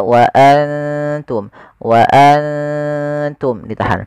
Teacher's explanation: itu kita samarkan nunnya kepada huruf ta dan ditahan 2 harakat. Bukan hanya sekedar wa antum, tapi dia wa antum ditahan. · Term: ikhfa